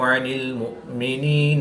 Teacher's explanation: عین کو حلق کے درمیان والے حصہ سے ادا کریں گے · حمزہ کو حلق کے نیچے والے حصہ سے ادا کریں گے